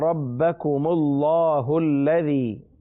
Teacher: الذی کے لام پر بھی تشدید ہے، اس لیے لام کو ہم مشدد پڑھیں گے